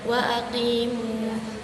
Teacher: Ujung lidah terletak di bagian belakang, yaitu ada huruf qaf